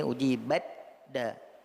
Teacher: Ta-nya sudah diidghamkan ke dalam huruf da.